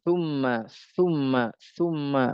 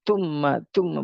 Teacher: sifat sa itu adalah sifatnya rokhawah. Dia mengalir begitu.